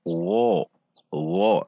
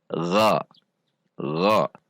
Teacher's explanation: Dibaca dengan menegangkan pangkal lidah gha, namun dengan tidak membulatkan bibir seperti wo, wo, namun gha, gha. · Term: huruf ghain